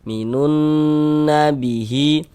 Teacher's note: Karena di bagian minun nun, nah itu kita tahan, kita gunnahkan. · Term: gunnah musyaddadah